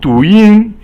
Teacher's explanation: Du is 二 声 and yin is 一 声